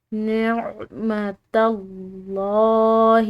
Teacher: یہاں پر لفظ اللہ کی لام موٹی ادا کریں گے کیونکہ پیچھے والی جو تا ہے وہ زبر کے ساتھ ہے